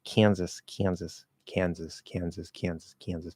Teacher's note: if we get really lazy with the nasal, it kind of starts sounding more northern.